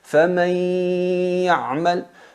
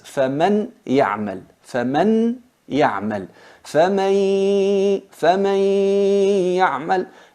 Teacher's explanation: eliminamos el sonido de la nun y mantenemos la nasalización. En realidad es فَمَنْ يَعْمَلْ, فَمَنْ يَعْمَلْ, فَمَنْ يَعْمَلْ. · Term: idgham bi gunna